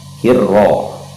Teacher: ro ini agak ditekankan sedikit karena ia huruf bertasdid, jadi agak disyiddahkan, ditekan sedikit. Kemudian huruf ra-nya dibaca tebal ya, dibaca tebal, dibaca tafkhim, sebab kaidah huruf ra itu ketika berharokat fathah atau domah itu dibaca tebal.